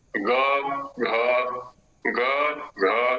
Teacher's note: वर्ण का जो उच्चारण है वो घोष से होगा, क्योंकि वहां पर कंठ संकुचित होगा, संवृत होगा। अब है ना, जब इनका उच्चारण करेंगे तो वहां स्पष्टता हो जाएगी।